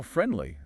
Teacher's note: when I say friendly really fast, the letter D often goes missing. That's elision at work.